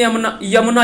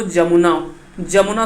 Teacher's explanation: अगर स्टार्टिंग में कहीं यमुना यमुना जैसे लिखा हो, अगर अंतसिया या शुरू में हो तो यह जो है वो ज में बदल जाता है और इसका नाम जो है वो जमुना, जमुना शुद्ध रूप होगा।